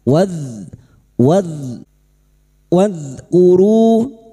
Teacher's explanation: Huruf dal bukan qalqalah ya. Jangan sampai dipantulkan.